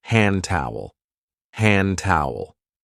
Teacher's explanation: We don't usually say handy towel. We link it and we say hand towel.